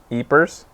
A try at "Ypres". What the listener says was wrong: I don't think the S is pronounced. Yp. Ypres. Is it kind of like desu? Like in Japanese, how like the U isn't pronounced?